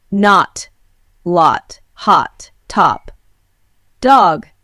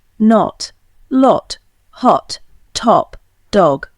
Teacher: In England, this is still an open O, pronounced with the lips rounded and the tongue at the back of the mouth. In America, however, except in parts of New England, it has commonly lost its rounding and in most words has become a sound very similar in quality to the A in father, only shorter.